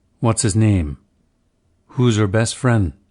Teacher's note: initial h on he he's him his him her hers in unstressed positions will be dropped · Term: h-dropping, H dropping